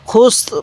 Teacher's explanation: ওয়াকফু করলে খুস র টা হালকা উচ্চারণ করব খুস এরকম ভাবে শিখবো এবার আমার সাথে সাথে পড়বেন ইন্নাল পড়ুন